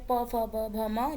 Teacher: ओष्ठ ध्वनियाँ वे ध्वनियाँ हैं जिनका उच्चारण मुख्यतः होठों के मिलाने या उन्हें गोल आकार देने से किया जाता है। हिंदी में ओष्ठ ध्वनियों में प फ ब भ म जैसी ध्वनियाँ शामिल हैं।